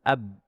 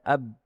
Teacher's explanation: Dia jahar tidak boleh ada angin. Ab. Dia tidak boleh mengalir suaranya ab.